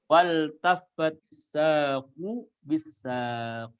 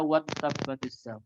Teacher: Karena lam di situ lam fi'il, bukan lam ta'rif. Maka dibaca izhar mutlak.